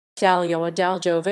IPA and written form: daˈlʲɔva (Daliowa)